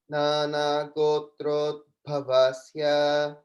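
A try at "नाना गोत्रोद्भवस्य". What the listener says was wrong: In Gotrod, it sounds a little bit short. So just make sure it's Gotrod. The O should be slightly longer, but going on.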